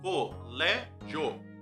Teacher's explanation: Então a gente tem 3 vezes descendo o queixo, para a gente poder fazer com que primeiro tenha a semivogal I e depois a vogal O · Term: ditongo crescente